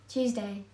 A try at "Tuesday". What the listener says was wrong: Yeah, his is more like a two. I was like a Tuesday. Say that again.